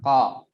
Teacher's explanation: Nah, jadi kita bayangkan kita kan masing-masing punya langit-langit mulut ya. Nah, huruf qaf itu dikeluarkan bersentuhan dengan langit-langit yang masih lunak, ya. Si langit-langitnya ini berdaging, ya.